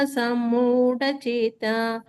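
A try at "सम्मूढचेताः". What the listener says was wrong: ಅಲ್ಲಿ ಸ್ವಭಾವ ಚೇತಾಹ ಅಂತ ಇದೆ. ಲಾಸ್ಟ್ ಅಲ್ಲಿ ಬರುವಾಗ ವಿಸರ್ಗ ಕೊಡ್ಬೇಕಲ್ಲಿ.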